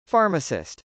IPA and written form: fˈɑrməsɪst (pharmacist)